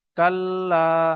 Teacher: আলিফ মাদ্দা এক আলিফ পরিমাণ টান দিতে হবে